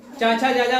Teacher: चाचा जाजा वाला तालु से आता है।